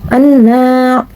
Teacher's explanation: Hukum tajwid anna yaitu gunnah, karena terdapat nun bertasyid dan bacanya ditahan serta memakai nada dengung ke hidung